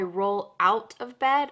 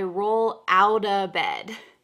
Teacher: The T here is going to change to a D sound